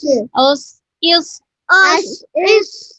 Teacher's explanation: صاد میں بھی سیٹی کریں گے لیکن اس کو کیا کریں گے، موٹا پڑھیں گے۔ حمزہ زبر صاد سکون اس.